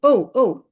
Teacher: 4 নম্বর টনকে falling টন বলবো,